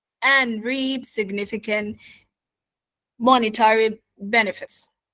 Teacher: It should be falling because it's the finish of the sentence, the end of the sentence.